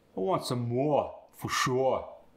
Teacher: if the r sound follows the or sound like more and sure just drop the r